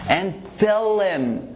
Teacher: The reduction for him is M. We actually gonna remove the H, so it's gonna be like this.